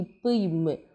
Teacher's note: மேலிதழும் கீழிதழும் பொருந்துறதுனால ஏற்படக்கூடியது